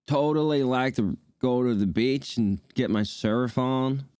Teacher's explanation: Heavy on the vowels, got a bit of a drawl, and everything's a question.